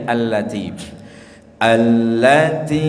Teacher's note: pada allati panjang sampai 5-6 harokat itu